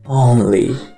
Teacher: a troca do O pelo U não acontece no inglês nas sílabas pretônicas. Sua pronúncia permanece como O